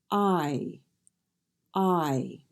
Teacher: I is made of two sounds ah and II I I make sure you drop your jaw as you say I to get a nice clear sound it won't be clear and it won't sound like an eye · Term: long vowel I